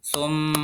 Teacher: juga menemukan kata tumma yaitu e mim bertasjid juga disebut gunah mendengung bacanya menunggu beberapa saat beberapa saat jangan langsung dipindah ke kata yang lain